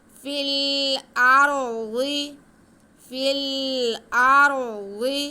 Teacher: آگے ضاد ہے، ضاد حروف مستعلیہ ہے، ہم اس کے آواز کو موٹا بھی کریں گے اور اس کے نیچے زیر ہے وہ پڑھیں گے، کھینچنا نہیں ہے۔